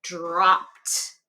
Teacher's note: I hear that T sound because P is a unvoiced sound. So it ends in the E d sound is going to be T.